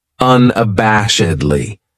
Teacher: this adverb has five syllables and the stress is on that third syllable that bash unabashedly that second syllable has that schah that uh